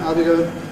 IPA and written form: ɑː.l b.i g.əʊ.n (I'll be going)